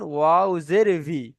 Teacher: দুটা ঠোঁট অসম্পূর্ণ মিলিয়ে ভি উচ্চারণটি হয়